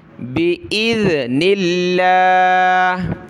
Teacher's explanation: ذال پر زبان نکالیں گے ، حمزہ کو ذال کے ساتھ ملایا اور نون کو لفظ